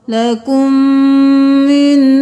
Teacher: میم کے ساتھ میم مل گیا، میم مشدد ہے غنہ ہوگا